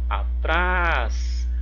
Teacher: o trás é a sílaba mais forte é a última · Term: oxítona